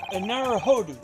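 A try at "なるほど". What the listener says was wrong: The OU in Japanese is supposed to be a longer O, so Naruhodo. Naruhodo.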